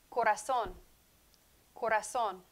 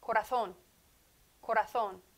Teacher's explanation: La Z in Spanish is the S sound, or in Castellano, in Spain, th sound.